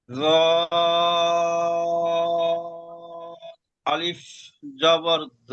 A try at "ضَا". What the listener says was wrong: যেটি জ নয়, দদ। ضاد আলিফ জাবার দ।